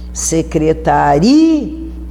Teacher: Porque secretaria, a tonicidade é ri.